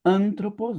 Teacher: O acento tá aqui no an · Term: sílaba tônica